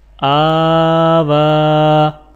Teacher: الف اور واو کے اوپر کھڑی زبر ہے تو لہٰذا دونوں کو ایک الف کے برابر کھینچ کر پڑھا جائے گا